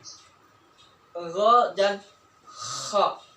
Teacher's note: keluar dari tenggorokan bagian atas, yaitu huruf gha di sini, gha dan kha